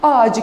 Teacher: Ağaç kelimesine biz ünlüyle başlayan bir ek getirdiğimiz zaman gördüğünüz gibi Ç sesinin C sesine dönüştüğünü gözlemleyebiliyoruz.